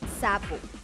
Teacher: Es fricativa, alveolar, sorda